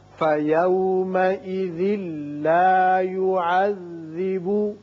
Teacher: یہاں ادغام بغیر غنہ ہوگا. ذال کی تنوین لام سے، یعنی ذال کی ایک زیر پڑھیں گے، نون کی آواز نہیں نکلے گی.